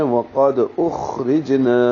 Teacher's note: سبیل اللہ، وقد واو ہونٹوں کی گلائی سے، قاف پر ہے، دال ساکن پہ قلقلہ ہے ، وقد اخرجنا، خا پہ ہمس ہے، یہ کھردرا ہے، یہ